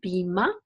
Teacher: the R at the end is not pronounced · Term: deep schwa